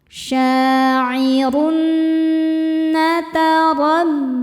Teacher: Karena tanwin bertemu dengan nun. Cara bacanya tanwin dileburkan ke nun kemudian dengungkan. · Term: idgham bighunah